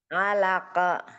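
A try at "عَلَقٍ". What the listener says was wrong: Kenapa dengarnya kayak ke ya?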